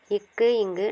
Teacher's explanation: நாவின் முதற்பகுதி அன்னத்தை தொடுவதால் பிறக்கின்றது